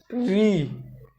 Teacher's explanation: री मतलब तालु के नीचे वाले भाग से, मूर्धा से, ये मूर्धा से आ रहे हैं